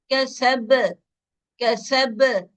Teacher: मजबूत, बहुत मजबूत कलकला नहीं करेंगे, नॉर्मल कलकला करेंगे